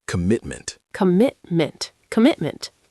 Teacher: Three syllables, stress on the second: com-MIT-ment.